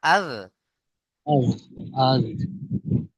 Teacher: জিভের আগা সামনের দাঁতের আগার সাথে লাগবে